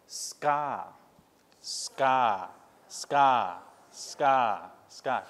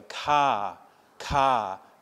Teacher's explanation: to pronounce it without the aspiration well the trick is that in English we don't aspirate those hard consonants when they come after an s